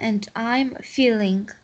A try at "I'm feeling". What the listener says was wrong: Только feeling, г не произносишь. I'm feeling. I'm feeling.